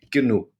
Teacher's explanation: be a hard sound g g- g g g and then at the end it almost sounds like I'm saying K